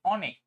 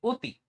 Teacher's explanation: আচ্ছা তোমাকে আমি বলি দেখো তুমি যখন আচ্ছা আমার কথার সাথে উত্তর দাও জাস্ট আমি বললাম যে অনেক আরেক জায়গায় বললাম যে অতি আচ্ছা ব্যাপার কি বলতো তুমি যখন অনেক বলছো তখন তুমি অ উচ্চারণ করছো আর যখন তুমি অতি উচ্চারণ করছো তখন তুমি ও উচ্চারণ করছো দেখ এখানে ও উচ্চারণ হচ্ছে।